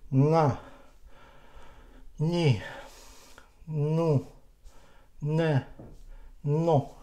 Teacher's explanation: the same position, the same focusing, the same decoy, but we move, we touch with the tongue, we touch this hard palate and let the air go into nasal cavity, and we will have a sound o.